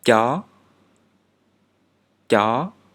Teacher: this sounds like china but without the aspiration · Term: stop manner